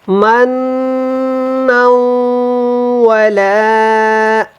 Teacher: نون کو جب ادا کرنا ہے تو شد ہے یہاں پہ، تو اس کو غنہ کے ساتھ ادا کریں